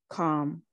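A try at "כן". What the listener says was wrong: It's an N. No. It shouldn't be the final shape, it. Con.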